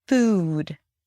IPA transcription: fuːd